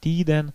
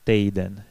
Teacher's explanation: Многие сразу замечают, что в словах, которые мы изучаем на курсах литературного языка, либо ' i', либо 'í', либо 'í', произносится мягко и долго . Однако в разговорной речи здесь встречается дифтонг 'ej'.